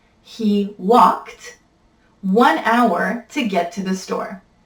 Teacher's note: because we're once again looking at a verb that ends with the k sound which is a voiceless sound we're going to pronounce that e.d like a t